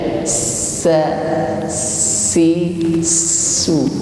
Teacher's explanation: Maka sin tekanan udaranya juga beda dengan shin, tidak begitu kuat sebagaimana huruf shin. Jadi huruf sin berdesis namun ringan, lebih tipis daripada shin yang sudah diucapkan sebelumnya.